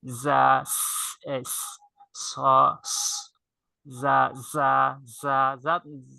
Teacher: এই পরের তিনটা হরফের উচ্চারণের স্থান হচ্ছে জিহ্বার আগা সামনের নিচের দুই দাঁতের আগা এবং পেটের সঙ্গে লাগিয়ে, এখানে এই তিনটা হরফের উচ্চারণের ক্ষেত্রে শীষ বের হবে